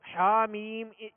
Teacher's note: حا کو وسط حلق سے ادا کریں گے، درمیانے حلق سے، اور میم پر مد لازم ہے.